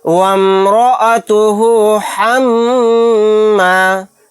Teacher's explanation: واو کو میم میں ملا دیں گے، را کو موٹا یعنی پر پڑھیں گے۔ وامرأتہ حمّا، میم کے اوپر تشدید ہے، یہاں پر غنہ کر کے پڑھیں گے۔